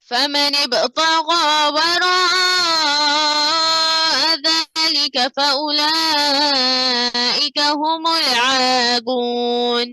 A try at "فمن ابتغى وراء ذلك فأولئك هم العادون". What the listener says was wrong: عين को क्लियर करो, هم العادون. रिपीट करो.